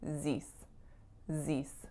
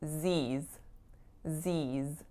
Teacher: So Z's has quite a long tense vowel as well.